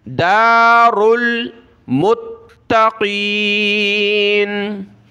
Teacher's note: را لام پیش رل، دار میم کو تا کے ساتھ ملا، تا کو سخت کریں گے تشدید کی وجہ سے اور قاف کو موٹا پڑھنا ہے